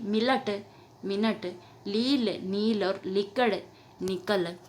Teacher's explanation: खड़ी बोली में कई संदर्भों में न का लय करने की प्रवृत्ति दिखाई देती, जिसे आधुनिक हिंदी में स्वीकार नहीं किया गया।